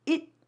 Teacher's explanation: the T at the end sometimes becomes a stopped T